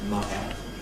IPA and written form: ˈmʌvə (mother)